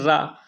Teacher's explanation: र को हम उच्चारण करते हैं र तो आपके जीभ में क्या है कंपन उत्पन्न होता है